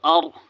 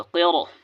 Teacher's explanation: یہاں پر راہ کو پر پڑھنا ہے کیونکہ راہ ساکنہ سے پہلے زبر ہے